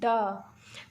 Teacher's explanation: जिनके उच्चारण में जीभ पहले ऊपर उठकर मूर्धा को स्पर्श करे फिर झटके के साथ नीचे आ जाए, उसे उच्छिप्त व्यंजन कहते हैं। जैसे बोलेंगे ड, तो हम लोग का जो जीभ है वो हम लोग के सबसे ऊपर वाले भाग को टच करके जल्दी से नीचे आ जा रही है, तो इसीलिए इसको उच्छिप्त व्यंजन कहा गया।